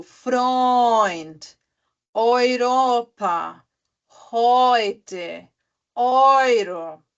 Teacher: É E-U, mas aí ele fica com a pronúncia de Oi. Então fica, por exemplo, Freund, Europa, heute, Euro.